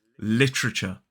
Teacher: as an isolated word, we don't pronounce the R. We only pronounce the R if this word is in a sentence and the next word starts with an open vowel sound. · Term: linking R